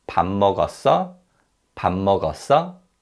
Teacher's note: Now, in terms of pronunciation, 밥 changes when it's used with the verb 먹었어. The 비읍 받침 sounds like a 미음 받침.